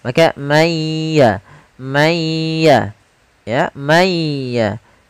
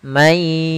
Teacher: Maka cara membacanya masukkan ke huruf ya sambil ditahan gunnahnya. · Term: idgham bi gunnah